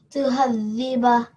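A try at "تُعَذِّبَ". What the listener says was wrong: Almost there. Try to get the ain from your throat. Tu'adhiba.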